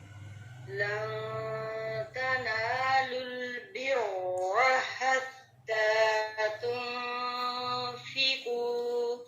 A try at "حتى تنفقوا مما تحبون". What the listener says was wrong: مخارج پہ فوکس کرنا ہے، حتی نہیں پڑھنا، حتی. ٹھیک ہے، مخارج پہ فوکس کریں. تو ہی کی آواز نہ آئے.